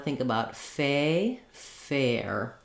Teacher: You may see that in the dictionary this way, like fair, but I again think that we use that A, that tense A, when we're saying fair